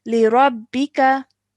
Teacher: Perfect, well done. Okay, so we join the ra to the ba with force because it has a shadda on top, and then we pronounce the kasra